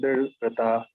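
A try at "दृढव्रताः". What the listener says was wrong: Drida vrataha. Drida. Full, na? It is not half. Don't cut it. Drida vrataha.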